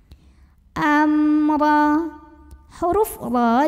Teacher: mim sukunnya adalah dibunyikan dengan izhar atau jelas bunyi m nya ya Jadi tidak ditahan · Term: izhar syafawi